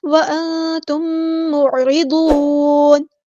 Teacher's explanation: وانتم معرضون، را جو ہے ہم نے یہاں پہ باریک پڑھنا، عین کو مستحرک مڈل تھروٹ سے ادا کرنا ہے، ضاد ہمارا ہیوی لیٹر ہے پورا ادا کریں گے ، اور نون کو ہم ساکن کر دیں گے وقف کرتے